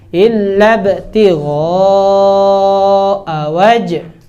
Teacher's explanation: Jadi alifnya nggak dibaca ya, langsung masuk ba. Illab gitu.